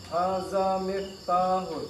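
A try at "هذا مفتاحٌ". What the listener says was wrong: Ya, cuma za-nya dilunakkan, Pak. Kalau jangan sampai jadi zai. Hadza miftahun. Ya, za seketik lah itu, Pak ya.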